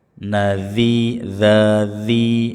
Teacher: ujung lidah dengan ujung-ujung gigi seri atas